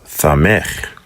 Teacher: the samech has a lispy S sound